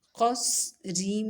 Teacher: پھر ہے قاف صاد زبر قص را میم زیر زم قص رم. قاف اور صاد کو خوب موٹا پڑھنا ہے، صاد کی آواز سیٹی والی ہوگی